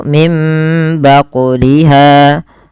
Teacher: Kemudian pada lafal baqliha ada bacaan qalqalah pada lafal huruf qof yang disukunkan. Maka cara membacanya harus memantul dan tidak boleh menambah hamzah. · Cara membacanya mengganti suara nunnya menjadi suara mim dan ditahan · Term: iqlab